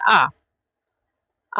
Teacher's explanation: आ को हम बोल रहे तो इसमें हमारे कंठ से आवाज निकल रही है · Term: कंठ वर्ण